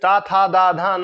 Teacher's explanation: फिर और ऊपर आ जाइए, दांत से बोले जाएंगे, दंत से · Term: दंतव्य